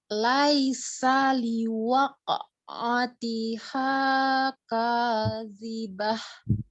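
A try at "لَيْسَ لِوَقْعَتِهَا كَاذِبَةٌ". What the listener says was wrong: Laisa ya, bukan laisa, tidak ditasdid huruf sinnya. Lai, turunkan dulu i, laisa liwaqa'atiha, dikolkolkan di huruf qafnya ya. Liwaqa.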